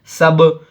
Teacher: حرف قلقلہ میں سے با آیا تو اس کو دو آواز میں پڑھیں گے. یہاں پہ ہم رکیں گے، ایک آواز میں پڑھیں گے جزم سکون.